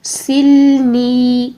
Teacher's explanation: اللہم اغسلنی، سل، لام کو بھی نہیں ہلائیں گے، ٹھیک ہے، سلنی، نی یا مدہ، پھر سے ہم 2 سیکنڈ کے لیے یہاں پر نون کی زیر کو لمبا کریں گے